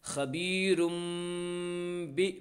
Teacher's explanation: را کے بعد دو پیش کی تنوین ہے اس لیے تنوین کو میم سے بدل کر غنہ اور اخفاء کے ساتھ پڑھیں گے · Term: اقلاب